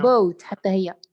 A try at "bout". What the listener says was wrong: Yeah, but not the same sound. You're reading them in the same way. You're saying boat, but they're not boat. The first one is boat, but the second one is not.